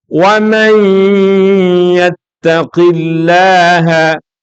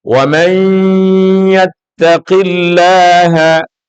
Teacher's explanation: Nun yang ketemu salah satu huruf idgham bi gunnah, kita ingat, idgham bi gunnah itu hurufnya 4, yaitu ya, nun, mim, wawu. Mesti nanti akhirnya menjadi bacaan khayshumi, bacaan dalam rongga hidung. Nunnya hilang, masuk kepada ya.